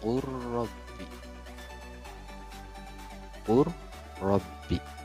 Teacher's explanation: lam mati bertemu dengan ro, maka berubah menjadi qur rabbi, ya. Jadi langsung saja qaf ke ro, ya, qur rabbi didukungkan, teman-temannya, seperti itu. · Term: idgham jinsi, idgham